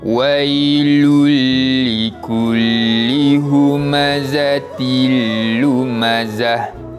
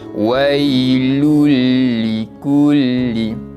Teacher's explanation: kita tak jelaskan bunyi bacaan tanwin, kita masuk terus pada huruf selepasnya. Dan satu lagi terdapat kebetulan tanwin 2 di bawah bertemu dengan huruf lam pun sama, merupakan hukum bacaan idgham bila gunnah.